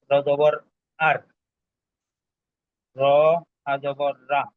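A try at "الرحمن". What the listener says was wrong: এখানে দুইটা কথা। একটা হলো র জবর রা হবে না, র জবর র হবে। হলো এখানে একটা কায়দা হলো না, র এর ক্ষেত্রে, তো এই রটা মোটা পড়বো না পাতলা পড়বো, এই বিষয়টাকে একটু উল্লেখ করবেন। জি, রয়ে জবর থাকার কারণে মোটা পড়বো।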